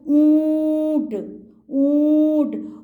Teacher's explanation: open mouth भी हुआ है और नाक से भी साउंड जा रही है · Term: अनुनासिक, चंद्र बिंदु